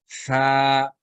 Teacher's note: आपको हल्की सी विसल आवाज हवा की थोड़ी सी महसूस होगा।